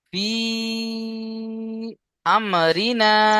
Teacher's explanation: হুরুফে মাদের পরে হামজা দ্বিতীয় রূপে দ্বিতীয় এসছে, রূপে তাই একে মাদ্দে মুনফাসিল বলে। মাদ্দে মুনফাসিলকে 2 থেকে 3 আলিফ টান দিয়ে পড়তে হবে।